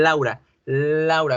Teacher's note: En español, la L hace que el aire pase por los laterales de los dientes. La lengua, digamos, está la lengua, toca por todos los lados a los dientes. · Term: sonido lateral